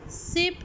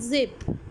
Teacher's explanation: s sound is voiceless and z sound is voiced। दोनों जो है वो फ्रिकेटिव्स हैं और दोनों जो है वो एल्व्यूलर है।